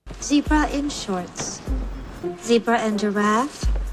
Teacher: zebra in american english it would be more like zebra so the e at the beginning would be pronounced once again like an e sound a quite long e as well